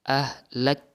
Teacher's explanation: ada hukum hamasnya ketika sukun. Jadi lebih terdengar aliran nafas.